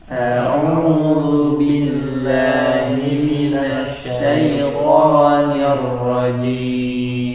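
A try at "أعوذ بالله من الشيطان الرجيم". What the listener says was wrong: Ya, masih di dha, hati-hati bukan wu.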